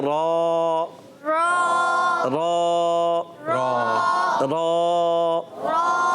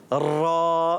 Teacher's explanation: थोड़ी सी अदा हो जाए, हल्की सी, आपकी ज़बान में कपकपाहट होती है वो आपको पता चले, मगर बहुत ज़्यादा करेंगे तो ख़राब हो जाएगा